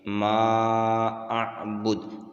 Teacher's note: یوں انتم عابدون ما اعبد، عین کے اوپر کھڑا زبر ہے، 1 الف کی مقدار اس کو کھینچیں گے، واو مدہ ہے، اس کو بھی 1 الف کی مقدار کھینچ کر پڑھیں گے۔ ما اعبد، مد منفصل ہے ما، اور اس کو 3 الف کی مقدار کھینچ کر پڑھیں گے۔ دال کے اوپر جب وقف کریں گے تو یہ ساکن ہوگا اور اس کے اوپر قلقلہ کریں گے۔